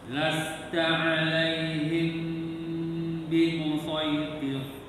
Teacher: Tirnya tipis atau tebal rohnya? Rohnya tebal.